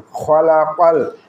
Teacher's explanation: কফকে আমরা কলকলা হিসেবে উচ্চারণ করবো। জিহ্বার গোড়া তার বরাবর উপরে তালের সঙ্গে লাগাই উচ্চারিত হয় কফ